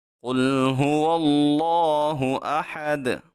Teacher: حمزہ کو خوب تحقیق سے سختی سے ادا کریں گے، اس حا کو باریک پڑھیں گے، اور اس دال میں حالت وقف میں ہم قلقلہ کر کے پڑھیں گے۔